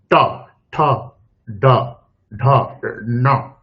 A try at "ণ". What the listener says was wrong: হ্যাঁ, জিভ উপরে তুলুন, উপরে তুলে দন্তান্ন বলুন। জিভ উপরে তুলুন, জিভ আপনার নেমে যাচ্ছে, জিভ উপরে রাখার চেষ্টা করুন। অল্প অল্প আসছে, জিভটাকে ওখানে স্টেবল করুন, ওখানে জিভটাকে তুলে দিয়ে নকার উচ্চারণ করুন।